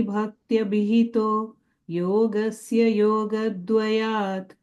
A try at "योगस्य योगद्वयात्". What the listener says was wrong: ரெண்டு ஒன்னு அந்த யோகஸ்ஸ அங்க there is no ya sound there, you're giving a ya sound there. யோகஸ்ஸ யோகஸ்ஸ யோகத்வயாத்